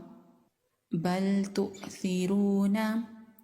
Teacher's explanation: हमजा पर झटका होगा। हमजा को झटके के साथ अदा करेंगे।